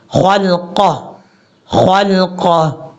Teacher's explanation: ونسي خل. اب یہاں پر خا حروف مستعلیہ میں سے ہے، اس کو پر پڑھیں گے